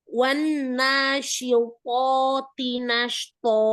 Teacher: To pertama dengan to kedua samakan tebalnya.